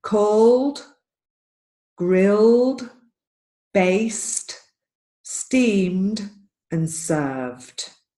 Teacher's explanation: This is very typical for Spanish speakers to get an extra syllable at the end. All of these words do not have an extra syllable